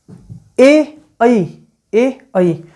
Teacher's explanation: ए आई में कंठ तालव्य है। कंठ तालव्य या तालु।